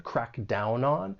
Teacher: And when you pronounce this phrase, more linking may occur. We can link the final consonant sound in down with the vowel sound in on.